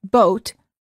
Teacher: for the o sound as in boat the lips are rounded